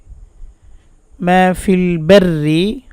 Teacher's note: বারি র পাতলা হবে